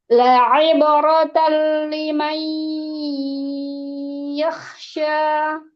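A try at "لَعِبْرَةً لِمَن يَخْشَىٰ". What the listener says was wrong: Kepanjangan itunya, idghamnya. Ini loh, mayyakh. Itu kepanjangan. Jangan sampai kepanjangan, jangan sampai kurang. Ketika idgham bi ghairi gunnah atau bila gunnah ya. Tali itu juga jangan terlalu lama. Nah, sekedar tawasud pada nun.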